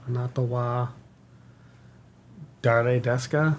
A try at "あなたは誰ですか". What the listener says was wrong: perfect. Right. Very good.